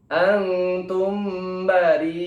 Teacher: apabila bertemu alif atau hamzah di satu kalimat, maka dikenai hukum bacaan mad wajib mutasil. Ya, bacanya panjang 4-6 ketukan.